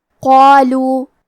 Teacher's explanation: مد الف اپنے پیچھے والے حرف کا حکم لیتا ہے تفخیم میں اور ترقیق میں، لہذا ہمیں مد الف کو بھی بھاری آواز میں پڑھنا ہے